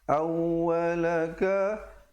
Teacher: waw dia ditekankan kerana bersabdu